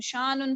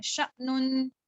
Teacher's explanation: یہ الف نہیں ہے، یہ حمزہ ہے، اس کے اوپر آپ نے جھٹکا دینا ہے